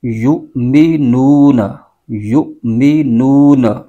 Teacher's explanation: اس کو پڑھیں گے یا حمزہ پیش یو، یؤمنون، یؤمنون، نو واو مدہ ہے، اس کو ایک الف کھینچ کے پڑھیں گے